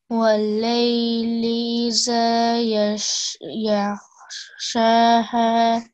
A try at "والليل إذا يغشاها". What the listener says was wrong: Yaghshaha. Okay, remember this letter here? This is a dhal. So we don't want to make a z sound there. It's either.